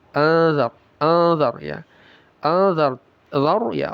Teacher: Nun sukun bertemu dzal ikhfa. Disamarkan lalu didengungkan.